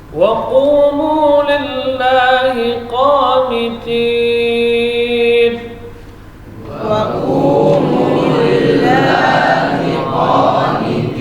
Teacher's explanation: Huruf waw ini huruf rakhawah dan jahar.